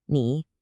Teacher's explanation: It's a third tone, so it needs to dip down and come back up.